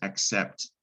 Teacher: C makes a K, then an S sound, which pretty much is an X sound